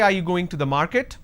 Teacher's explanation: are you going to the market? Then it's a rising tone